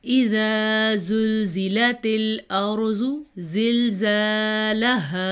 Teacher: ارضو میں را کو پر پڑھیں گے کیونکہ را ساکن ہے اور اس سے پہلے حرف کے اوپر زبر ہے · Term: را پر